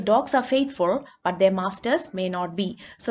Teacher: there is a pause after faithful also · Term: tone group boundary